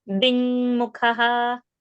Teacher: Ding without a g sound